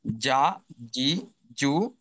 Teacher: এরপর আছে আমাদের 6 নম্বর মাখরাজ, অর্থাৎ জিহ্বার মাঝখান থেকে তার বরাবর উপরের তালুর সঙ্গে লেগে উচ্চারিত হয়। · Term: জিম